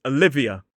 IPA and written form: əˈlɪviə (Olivia)